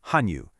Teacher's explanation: the classic third tone into a fourth tone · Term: 3rd tone into a 4th tone